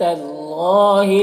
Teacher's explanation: قل قاف حروف مستعلیہ میں سے ہے، من کے نون میں اظہار حقیقی ہو رہا، حرم را کو پر پڑھیں گے، زی میں یا مدہ ہے اور اللہ کلام سے پہلے زبر ہے، اللہ کلام کو پر پڑھیں گے